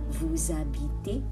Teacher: vous habitez, there should be a link or liaison there.